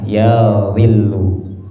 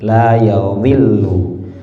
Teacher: Terus dzalnya itu pakai dzal yang ada titiknya, yadhillu ya. Yadhi, bukan dal yang enggak ada titik, tapi dzal yang ujung lidah ke ujung gigi seri atas